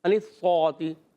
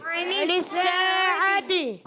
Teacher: نون کو سین سے ملانا ہے، سین کو یہاں باریک ادا کریں گے، سیٹی کے ساتھ ادا کریں گے، اس چیز کا خاص خیال رکھنا ہے. اور سین الف زبر سا، ایک الف کھینچ کر ادا کرنا ہے